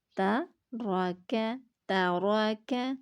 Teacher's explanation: را جو ہے وہ زبر کی وجہ سے ہم پر پڑھیں گے